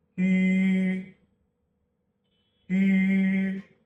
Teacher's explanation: In both cases, the tongue is held in the highest and most fronted position possible. The main difference is the lip shape.